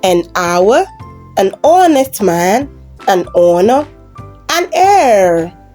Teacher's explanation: Those words have an H at the very beginning. But when we speak the H completely disappears like a ghost. It's totally silent.